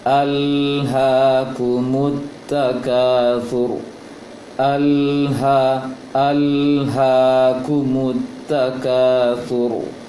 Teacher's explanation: lam sukun tanpa ada pantulan sedikit pun. Oleh karena itu berhati-hati ketika membaca alha kumut takatsur, alha seharusnya sama dengan baca ilmal yaqin.